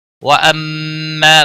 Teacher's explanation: وَأَمَّا میم مشدد پر غنہ ہوگا، آگے مد منفصل آ رہی ہے، 3 الف کے برابر کھینچ کر پڑھیں گے